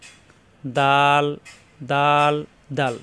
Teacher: দাল জিহ্বার আগা উপরে দুই দাঁতের গোড়ায় লাগিয়ে